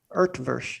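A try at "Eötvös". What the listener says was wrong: No, there's no R sound. Utvush is.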